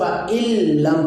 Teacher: فَإِن لَم تھا، تو نون ساکن کے بعد حرف لام آ گیا ہے، تو اس لیے یہاں پر ادغام ہوگا، اس لیے اس کو فَإِلَّمْ پڑھیں گے، یعنی نون کو ختم کر دیں گے، نون کا لام میں ادغام کر دیں گے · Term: ادغام بلا غنہ